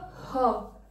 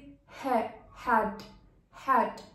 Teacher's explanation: restriction of the air flow at the glottis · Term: ग्लोटल साउंड